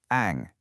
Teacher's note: the back of your tongue goes up and the sound is much more open in your throat.